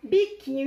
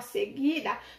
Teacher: quando você pronunciou a palavra biquinho e a palavra seguida, não foram emitidos o som do U. E também eu digo que quando que são dígrafos, quando os grupos GU e QU, eles vêm, ó, seguido das vogais E e das vogais I.